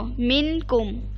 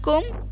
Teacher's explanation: اخفا کروں گی آواز کو ناک میں چھپا کر